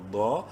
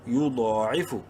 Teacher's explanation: یا پیشو، ضاد کھڑی زبر ضاد، ضاد کو پراپر اپنے مخرج سے پڑھتے ہوئے بولڈ کرتے ہوئے 1 الف کے برابر لمبا بھی کریں گے کھڑی زبر کی وجہ سے.